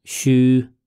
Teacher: it's a level first tone